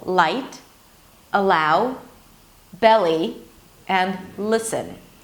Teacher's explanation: To make the L sound you bring the tip of the tongue up to touch the roof of the mouth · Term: light L